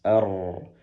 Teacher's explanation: Pastikan rnya dipertebal dengan mengangkat pangkal lidah ke atas